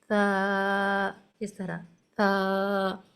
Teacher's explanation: जबान की नोक जबकि ऊपर वाले दो दांतों के सिरे से लगे यहां से सा अदा होता है और सा की अदायगी में एक नरमी और आवाज थोड़ी नरम